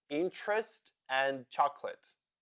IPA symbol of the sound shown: ə